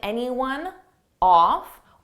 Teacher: Off starts with a vowel, and anyone, it ends on an N sound. So I can take that N and just add it in front of the vowel.